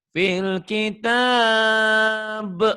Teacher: B-nya kol-kolah ya karena dimatikan.